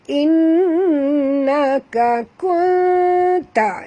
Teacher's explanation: nun mati bertemu ta, sorok dan dengung, ikhfa hakiki ya.